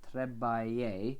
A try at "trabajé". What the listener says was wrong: Tra. It's an A.